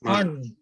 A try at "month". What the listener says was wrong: Yes, it's not month. It's not month. It's month. Month. Ya, if possible, kalau mungkin man-nya jangan man aja. Ya, kalau man itu kayak siapa sih man gitu. It's month. Kalau boleh pakai ada ujungnya.